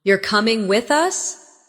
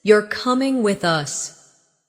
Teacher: The rise in your voice at the end of the question signals uncertainty. While the drop at the end of the statement signals certainty.